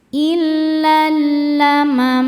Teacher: Illal alif lamnya namanya alif lam syamsiyah karena alif lam menghadapi huruf syamsiyah yaitu lam. Cara bacanya alif lam lewat masuk langsung ke lam kedua atau diidghamkan.